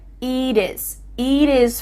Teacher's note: Here, the final T is changing to a D.